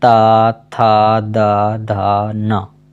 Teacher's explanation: ता, था, दा, धा, ना, ये सभी वर्णों का उच्चारण दंत से होता है।